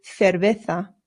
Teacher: Remember, the C's in Spanish make a th sound, but the Z's do as well.